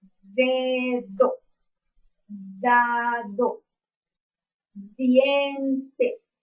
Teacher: Este fonema, según su modo de articulación, es oclusivo y su punto de articulación es dental. Pues ya sabemos que al pronunciar la D estamos haciendo contacto de la punta de la lengua con los dientes superiores. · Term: fonema D, el fonema D